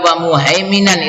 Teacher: idhar halqi muhaiminan karena bertemu dengan ain, idhar halqi, ini tanwin fathahnya dibaca jelas